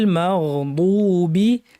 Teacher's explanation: জিহ্বার দুই পাশ ব্যবহার করে আমাদেরকে গাল থেকে উপরের পাটির দাঁত থেকে উচ্চারণ করতে হবে